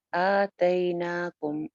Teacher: آ ایک الف لمبا، نا بھی ایک الف لمبا، تئی جو ہے یہ یا لین ہے، اس کا وزن بھی آپ نے پڑھا کہ یہ گئی کے وزن پہ پڑھتے ہیں۔